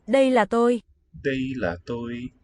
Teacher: I think first and last word here have just a high level tone. La is lower and maybe falling a bit.